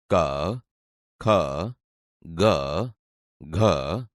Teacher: તમે જોશો કે તે ગળામાંથી બોલાય છે તેથી આ કંઠીય વ્યંજન છે